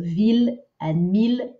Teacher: Those ones are pronounced not as an I-L-L sound, but just as an L sound.